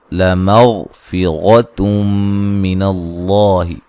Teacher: غین کو موٹا ادا کریں گے اور یہ غین کو ہلانا نہیں ہے